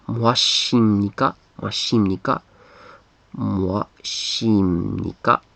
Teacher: this is actually a B sound in Korean, but when it's combined in this case with a ni, nika, nida, it becomes like an M. That's a bilabial consonant.